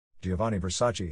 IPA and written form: ˈdʒovanni verˈsaːtʃe (Gianni Versace)